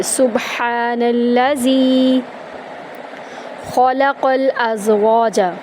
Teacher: خا اور قاف کو پر کریں گے، لام کو آرام سے پڑھیں گے، لام قاف کو لام کے اندر داخل کریں گے، حمزہ کو زا میں داخل کریں گے، از واو کو ایک الف کے برابر لمبا کریں گے، ازواج جیم کو یہاں پر ہم آرام سے پڑھیں گے، یہاں پر کلکلا نہیں ہوگا۔